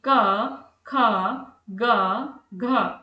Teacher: इन ध्वनियों को बोलते समय जीभ का पिछला भाग कंठ के पास काम करता है और वायु हमारे गले से निकलती है। जैसे कि क ख ग घ जब मैं इन्हें बोल रही हूं तो इन्हें बोलते समय मेरी जीभ का जो पिछला भाग है वो कंठ के पास काम कर रहा है और जो वायु है वो मेरे गले से निकल रही है। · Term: कंठ व्यंजन